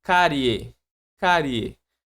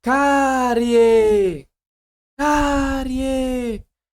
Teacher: o som do I é mais baixo do que o som do e. Então ali eu vou ter um ditongo. É, por ser mais baixo e depois por mais alto, a gente tem um ditongo crescente.